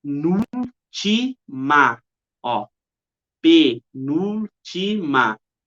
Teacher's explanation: É a terceira sílaba, a antepenúltima sílaba é a sílaba tônica. Logo, é uma proparoxítona